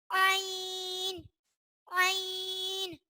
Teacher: عین حلق کے درمیان والے حصے سے ادا ہوتا ہے